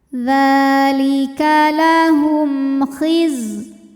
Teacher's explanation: Kemudian ada hukum idhar syafawi, sebab ada mim sukun yang menghadapi huruf selain mim dan ba, yaitu huruf kha. Maka mim sukun ini kita bunyikan dengan jelas, jadi bunyi M dan tidak ditahan.